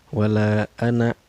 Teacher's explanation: cara bacanya dipanjangkan empat harakat atau lima harkat ya